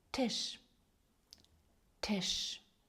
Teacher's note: Літеру т ми читаємо як звук т з придиханням.